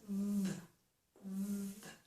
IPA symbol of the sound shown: ð